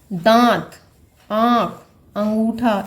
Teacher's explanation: अनुस्वार में क्या था, नाक से ज़्यादा और मुख से कम श्वास निकलता है, और इसका उल्टा अनुनासिक में हो जाता है। इनके उच्चारण में नाक से कम और मुख से अधिक सांस निकलती है।